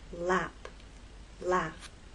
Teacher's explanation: Our examples in the first lesson were laugh, lap. The tip of your tongue dropped to make the next vowel sound.